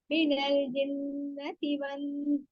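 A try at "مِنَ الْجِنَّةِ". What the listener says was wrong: लाम को हलाए नहीं, लाम जज्म वाले को, फिर कोशिश करें। मिनल जिन्ना, क्योंकि लाम और दोनों बारीक भी हैं, अगर नल कर देंगे तो नून मोटा नहीं है, लाम मोटा नहीं है, नल नल लेकिन मखरज में रहना है, ठीक है।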